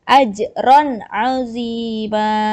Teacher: di atas ro ini ada tanwin dan setelah tanwin ada huruf ain, maka dibacanya jelas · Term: izhar